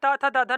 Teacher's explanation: और उसके बाद जो ता वर्ग है इनको बोला जाता है दंत व्यंजन